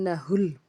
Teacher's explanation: نون مشدد، اس پہ غنہ کریں گے خوب، ہا کو لام سے ملایا۔